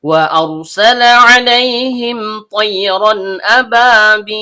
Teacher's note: Ada huruf waw yang keluar dari bibir.